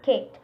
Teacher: Although the two sounds K are not identical, the first K is pronounced with more aspiration than the second. They are heard as two instances of K.